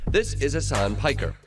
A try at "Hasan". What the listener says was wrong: Hasan. H is silent now. Hasan Piker.